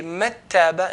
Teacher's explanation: there's no ghunna and there's no touching of the tongue to the roof of the mouth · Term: Idgham